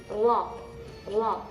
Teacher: mengangkatkan ee punggung ujung lidah ke langit-langit sampai dia nyampai nyentuh Terus dia bergetarnya hanya sekali saja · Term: huruf ro